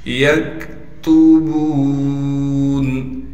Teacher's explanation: یکتبون، یا کو کاف سے ملائیں گے اس لیے کہ کاف ساکن ہے اور کاف کو باریک کر کے پڑھنا ہے بغیر قلقلہ کے یعنی بغیر آواز ہلائے۔ تا کو باریک کر کے پڑھیں گے، موٹا نہ پڑھا جائے تا بالکل۔